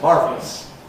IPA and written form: ˈmɑːrvləs (marvelous)